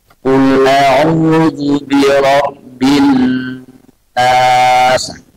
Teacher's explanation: Yang nas semua di ujung itu panjang lebih. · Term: mad arid bisukun